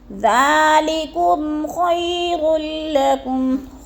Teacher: میم ساکن کے بعد خا آ گیا ہے تو ادھر اظہار شفی غنہ نہیں کریں گے، لفظ کو ظاہر کر کے پڑھیں گے